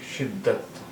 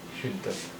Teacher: دال پر تشدید ہے، یعنی دا کی 2 بار آواز ہے، یعنی پہلے آدھا دا پھر پورا دا